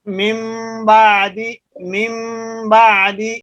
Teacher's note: اسی طرح اگر نون ساکن یا تنوین کے بعد با آ جائے، نون ساکن اور تنوین کے بعد لفظ با آ جائے، جیسے مم بعد، اصل من بعد ہے تو نون کے بعد با آ رہی ہے، اگر نون ساکن یا تنوین کے بعد لفظ با آ جائے تو یہ دونوں میم بن جاتے ہیں اور وہاں غنہ بھی ہوتا ہے، مم بعدی، مم بعدی۔